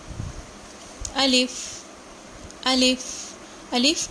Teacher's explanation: الف الف الف منہ کے خالی حصے سے ادا ہوتا ہے